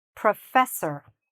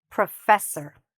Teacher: So, we're not saying or, we're saying er.